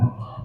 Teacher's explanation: Nah, ko itu posisinya, kalau ini adalah lidah nih, ini adalah ujung lidah, ini pangkal lidah. Nah, ko itu dia menaikkan pangkal lidah